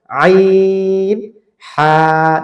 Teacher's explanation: কণ্ঠনালীর মাঝখানে একটু চাপ দিয়ে বলবেন, বাট শক্ত না